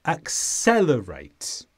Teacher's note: the stress is on the sound sell.